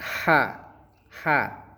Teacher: Huruf H ini kosong suaranya di tenggorok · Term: huruf ha